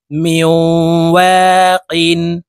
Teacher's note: মিম ওয়াও জের মিও নুন সাকিনের পরে ইদগামে বা গুন্নার হরফ ওয়াও আসছে, এই মিম তাসদিদওয়ালা ওয়ার সাথে গুন্নার সহিত মিলাইয়া পড়ব, মাঝখানে জজমওয়ালা নুন বাদ পড়ে যাবে। মিম ওয়াও জের মিও ওয়াও আলিফ জবর ওয়া মিও ওয়া কফ দুই জের কিন মিও ওয়াকিন।